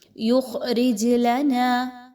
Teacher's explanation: جیم حروف قلقلہ میں سے ہے، اس لیے اس کو یہاں پر ہلا کر پڑھا جائے گا چونکہ اس پر جزم کی علامت آ گئی ہے۔